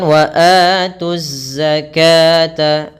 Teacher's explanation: 'tu' langsung ditashidkan dan menyatu dengan zai, yang membawa tashidan; Lam di sini adalah bagian dari alif lam syamsiyah, yang langsung menuju ke zai.